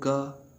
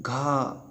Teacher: हम बोलते हैं ग तो भी हवा निकलती है, और हम बोलते हैं घा तो और ज़्यादा हवा निकलती है